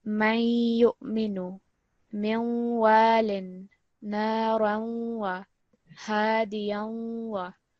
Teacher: When you have a noon sakin, or you have a tanveen, and you're joining it with a ya mushaddad or a waw mushaddad. The way that you join it, you're going to produce a slight nasal sound.